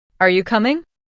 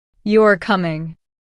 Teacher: The rising tone shows it's a question. The falling tone shows it's a statement. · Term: intonation